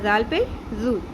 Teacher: ذال نرمی سے، بزنگ ساؤنڈ نہیں آنی چاہیے، شدت سے نہیں پڑھنا، نرمی سے پڑھنا ہے، اور ذال پیش ذو شارٹ ہے، اس کو زیادہ لمبا نہیں کرنا۔